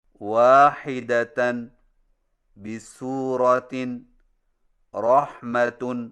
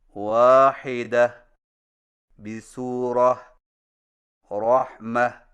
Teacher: جزم والی ہا سے بدل کر وقف کریں جب آخری حرف گول تا ہو